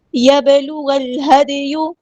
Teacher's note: دیکھیں حرکات مدہ یہ 2 کاؤنٹ لمبا کریں گے، یبلغ الہدی، با ساکن ہے تو کلکلا ہو رہا ہے